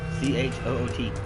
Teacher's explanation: his SH sound, or his sh is always a ch. So instead of SH, it's like CH.